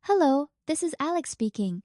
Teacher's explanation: Notice the friendly, rising intonation at the end, which sounds welcoming.